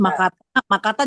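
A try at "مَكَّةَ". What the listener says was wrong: Makkata. Makkah. Inkaf ya, tasdid Makkata.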